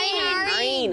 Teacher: اور ہا اور عین کو ہم کیسے ادا کرتے ہیں؟ حلق کے درمیانی حصے سے